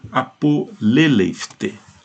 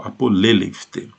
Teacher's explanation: A aspiração do teta, ela contamina o pi. E o pi vai virar o quê? Uma bilabial aspirada, ou seja, o fi, e o sigma vai desaparecer. Então isso daqui vai ficar um apoleleifte.